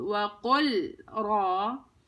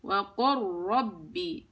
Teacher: اللام تحولت إلى راء مشددة ساكنة ودخلت في الراء اللي بعدها